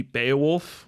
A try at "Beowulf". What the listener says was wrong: You pronounced it wrong. It's oof.